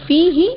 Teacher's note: فا یا زیر فی یا مدہ ایک الف کے برابر کھینچیں گے، اور ہا کو بغیر کھینچے پڑھیں گے